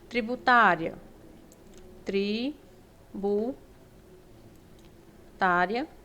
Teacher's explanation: eu tenho aqui uma paroxítona né a sílaba mais forte é o tá termina com ditongo crescente semivogal mais vogal e o nosso gabarito